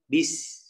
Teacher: Selain dia dikeluarkan desisnya, dia juga dikeluarkan ya nafasnya. Bis, jadi lebih banyak. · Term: hams